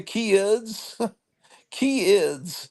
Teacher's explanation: some parts of the United States kids is a two syllable word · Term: extra syllables